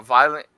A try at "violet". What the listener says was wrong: Every time you say violet, it sounds like you're saying violent. The violent light.